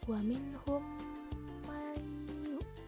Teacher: Nun sukun menghadapi ya. Hukumnya idgham bigunnah.